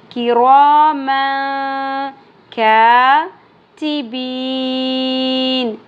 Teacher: دو زبر تنوین کے بعد حروف اخفا میں سے کاف آ گیا، اخفا مع الغنہ ہوگا